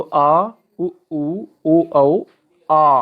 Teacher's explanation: जिन स्वरों का जो उच्चारण है वो जीभ के पश्च भाग से काम करता है उनको हम पश्च स्वर कहते हैं।